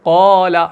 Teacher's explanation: तफकीम कहते हैं हरफ को मोटा अदा करना।